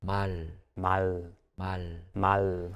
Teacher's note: at the end of the syllable it takes on more of an l sound